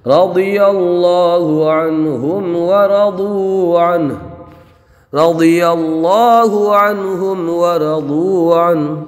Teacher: یہاں پر را کو پر پڑھیں گے، ضاد کو پر پڑھیں گے اس لیے کہ ضاد حروف مستعلیہ میں سے ہے، اللہ کے لام کو پر پڑھیں گے اور نون ساکن میں اظہار ہوگا، میم ساکن میں اظہار شفوی ہوگا، را کو پر پڑھیں گے، ضاد کو پر پڑھیں گے، واو میں مدہ ہوگا، نون ساکن میں اظہار ہوگا اور ہا کو وقف میں ساکن کر دیں گے۔